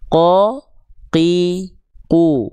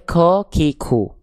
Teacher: dia enggak keluar percikan percikan-percikan nafas ya. Qo qi, qu ah enggak boleh ko ki ku.